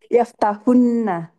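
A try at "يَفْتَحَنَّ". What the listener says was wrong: haknya difathahkan. Ya, ini nun taukid sakilah. yaftahanna.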